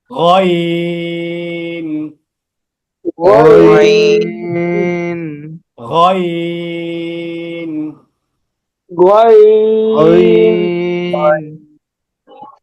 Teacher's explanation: গইনটা সহজ কণ্ঠনালীর শেষ থেকে খ এর মত করে তবে তিন আলিফ টান